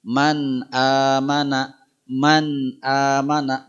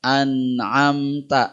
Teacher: ini suara n tidak berubah suara n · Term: hukum izhar